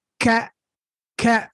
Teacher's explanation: So instead of the sound coming out freely through my chest, I'm constricting it when it gets to my tongue.